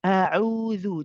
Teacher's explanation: For the ain, it's higher up in the throat, and you'll feel the tension